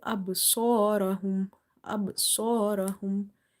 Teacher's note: qalqalah will be weak because ba is occurring somewhere in between